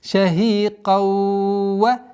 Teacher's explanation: Здесь у нас идгам, частичный идгам, частичная назализация в размере 2 огласовок.